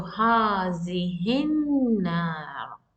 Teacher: You totally omit the hamzatul wasl and the lam. As hamzatul wasl is coming in between line, in between words, 2 words, the moment it is in between 2 words, you need to cancel hamzatul wasl. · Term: lam shamsiya